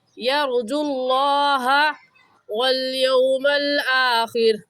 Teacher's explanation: لفظ اللہ کو پر یعنی موٹا کر کے پڑھیں گے، اور موٹا کرنے کا طریقہ کہ آپ کے دونوں ہونٹ گول ہو جائے